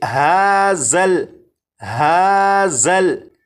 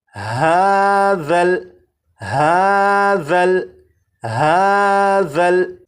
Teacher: اب اس لفظ کو پڑھیں گے، اور اس لفظ میں یہاں پر دیکھیں یہ ذال ہے، ذال کو نرمی سے پڑھیں گے، یعنی سی ٹی کی آواز کے بغیر پڑھیں گے، اور اس حرف کی سی ٹی کی آواز کو ختم کرنے کے لیے زبان کی نوک کو اوپر کے سامنے کے 2 دانتوں کے سرے سے جب لگائیں گے تو ذال کے اندر جو سی ٹی کی آواز ہوتی ہے وہ ختم ہو جائے گی۔